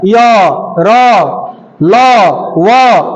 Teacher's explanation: इनके उच्चारण में कहीं रुकावट नहीं होता है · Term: अंतस्थ व्यंजन